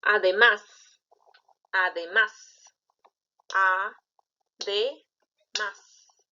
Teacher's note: ¿Dónde está la mayor fuerza de voz? En más. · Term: sílaba tónica